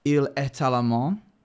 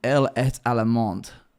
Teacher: When you add an E, the last consonant is pronounced.